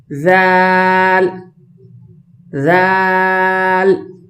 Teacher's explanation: زبان کو دونوں دانتوں کے درمیان رکھ کر زبان کی نوک تھوڑی سی باہر ہو، جیسے، اور باریک آواز ہو۔